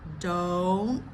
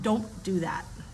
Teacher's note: the N goes to the roof of the mouth, up where the alveolar ridge is, which is that bumpy part